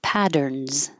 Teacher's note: Patterns, those two T's will sound like a D. Patterns, and the S sounds like a Z.